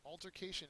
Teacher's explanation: many people have a problem with this uh it's a noun third syllable is accented